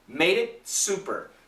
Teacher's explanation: So it's a stop T and then a strong S.